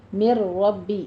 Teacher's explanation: من ربی نہیں کہنا ہے، مر ڈائریکٹ ہم را کی آواز لے کر آئیں گے. ادغام بلا غنہ ہے، یعنی مدغم کرنا ہے نون ساکن میں لیکن بغیر غننے کے.